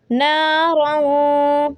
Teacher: تنوین را 2 زبر یہاں پہ غنہ کریں گے